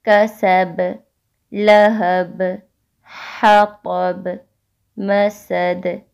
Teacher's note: یہاں ہر آیت کے آخر میں با حالت وقف میں ہے تو یہاں قلقلہ ہوگا، ٹھیک ہے، شد نہیں ہے، یہ بات آپ نے ذہن میں رکھنی ہے، تو قلقلہ زیادہ واضح نہیں ہوگا.